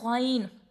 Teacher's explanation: غین کو بھی ہم لوگ 3 الف لمبا کریں گے. اور غین کا مخرج کیا ہے؟ حلق کے اوپر والے حصے سے